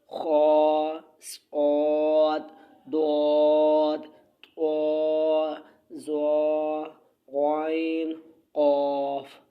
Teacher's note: ہر حالت میں پر یعنی موٹے پڑھے جاتے ہیں، انہیں حروف مستعلیہ کہتے ہیں